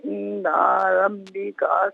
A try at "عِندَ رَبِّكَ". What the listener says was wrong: اور دوسرا یہ کہ عند ربک نہیں، عند ربک دال کو بغیر کھینچے پڑھیں گے۔ جزاک اللہ۔ ناظرین و سامعین، اس کے ساتھ ہی ہمارے اس پروگرام کا وقت اپنے اختتام کو پہنچا۔ یہ پروگرام جسے آپ روزانہ علاوہ ہفتے اتوار کے سپہر 4 بجے سے لائیو دیکھا کرتے